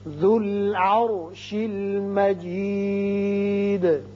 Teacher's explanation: ذال کی پیش لام سے ملے گی. را ساکن ہے لیکن پہلے زبر ہے اس لیے اس کو پر پڑھیں گے